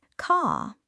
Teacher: In many British accents, especially received pronunciation, that R sound is often dropped, so car sounds more like caw